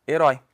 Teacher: nós temos uma oxítona porque é o som mais forte é a última sílaba terminada em ditongo aberto